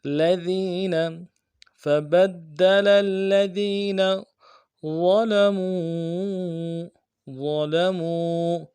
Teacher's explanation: ذال کو یا کے ساتھ ملانا ہے، یا مدہ ایک الف دال میں کھینچیں گے، نون کو نرمی سے ادا کریں گے۔